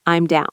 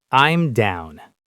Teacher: Pronunciation-wise, I'm and down link together smoothly.